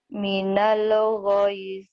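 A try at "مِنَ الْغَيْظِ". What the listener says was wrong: jangan minal lelelele, jangan ada e-nya. Minal.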